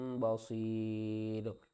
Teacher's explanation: اوپر والے دونوں پیش ختم ہو جائیں گے، را بھی ساکن ہے، اس سے پہلے یا ساکن سے پہلے زیر ہے، حروف مدہ بھی ہے، تو اس کو ہم نے 3 الف کی مقدار کھینچ کر پڑھنا ہے۔